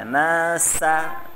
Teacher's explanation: Nasa tipiskan sin ya